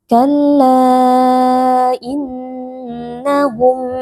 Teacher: Kalla di sini ada mad jaiz munfasil yaitu ketika ada mad tabi'i, ada alif yang sebelumnya berharokat fathah bertemu dengan hamzah di dalam 2 kata berbeda yaitu pada kata innahum. Mad jaiz munfasil dibaca panjang 4 atau 5 harokat. Innahum ada nun tasydid wajib dibaca dengan berdengung.